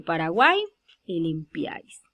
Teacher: primeramente la primera vocal es cerrada la última vocal es cerrada la de al medio es abierta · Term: triptongo